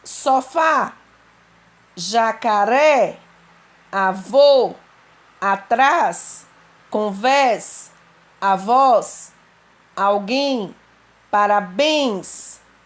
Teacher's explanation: as oxítonas são as palavras que têm a última sílaba mais forte. Terminadas em a, as, e, es, o, os, em, ens.